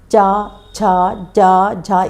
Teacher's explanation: इसमें आपकी जीवा किस जगह को छू रही है? तालुका स्पर्श कर रही है।